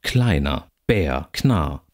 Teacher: nicht als R ausgesprochen werden kann sondern dann zum Vokal wird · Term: rvokalisierung